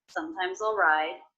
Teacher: I noticed the ending s here is pronounced as a Z